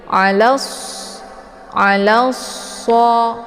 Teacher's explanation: Cara bacanya lamnya langsung dileburkan ataupun dimasukkan ke dalam huruf shad. Dan untuk alif lamnya tidak lagi dibaca. · so dibaca tebal dan desis anginnya itu jelas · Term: idgham syamsiyah